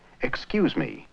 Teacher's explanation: excuse me the French speaker has a heavy stress on me an English speaker would normally say excuse me with a heavy stress on the cues of excuse